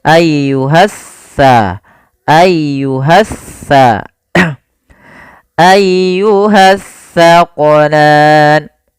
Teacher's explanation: Alif lam yang dia tertulis tapi tidak dibaca lamnya sehingga langsung diidghamkan ke huruf setelahnya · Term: alif lam syamsiyah